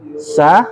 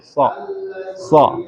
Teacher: Kalau sa ini lidahnya kita datar. Kalau so kita angkat.